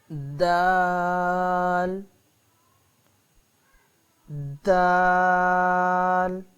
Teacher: زبان کی نوک اوپر والے دانتوں کی جڑوں سے لگے تو دال ادا ہوتا ہے